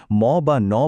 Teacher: এই ক্ষেত্রে বাতাস মুখ দিয়ে বেরনোর রাস্তাটা বন্ধ থাকে। তখন বাতাস বাধ্য হয়ে নাক দিয়ে বেরিয়ে আসে। ম বা ন বলার সময় এটা খুব স্পষ্ট বোঝা যায়। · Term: নাসিক্য ব্যঞ্জন